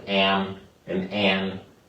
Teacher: nasalized A, words like am and an, you hear that nasal an. So you hear that nasal sound.